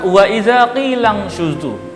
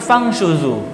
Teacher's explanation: terdapat nun mati yang bertemu dengan huruf shin, maka dari itu dinamakan ikhfa dan wajib dibaca samar nunnya